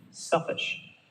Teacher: it was one word selfish and the stress would be in the first part